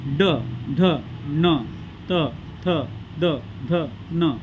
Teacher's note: दाताच्या वरच्या जबड्यामध्ये जेव्हा जीभ लागते तेव्हा हे अक्षर म्हणजे उच्चारले जातात